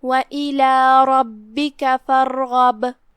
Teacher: با کا حکم ہوا قلقلہ، تو ہم با کو ہلاتے ہوئے یہ کلمہ کی ادائیگی کریں گے